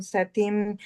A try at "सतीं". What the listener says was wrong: And the first line is Satim and the long E. Okay. I think you said it like a short E. Satim. Satim, long E.